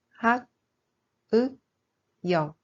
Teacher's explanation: This is normally pronounced like 'g', but if used as the final consonant, the pronunciation becomes 'k'.